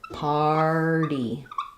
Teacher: So in American English, we flap this T. · This is a word where the AR does say the R sound, so it is just like the word part or car, far. We have the R, flap T, and then the Y says the E sound.